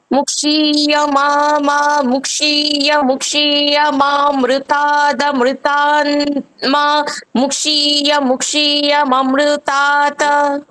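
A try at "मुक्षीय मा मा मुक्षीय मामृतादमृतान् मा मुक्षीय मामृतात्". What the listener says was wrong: মাটাকে টানতে হবে তো।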